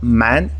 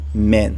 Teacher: eu tenho um a um pouco mais acentuado né que fica meio que intermediário entre o o a e o e